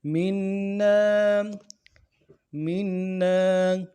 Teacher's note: رحمتم، إلا رحمتم منا، منا، میم کے نیچے زیر ہے، اس زیر کو نون کے ساتھ ملانا ہے، نون کے اوپر تشدید ہے، زور دیں گے، اور نون کے بعد الف مدہ بھی ہے، ایک الف دار میں کھینچیں گے۔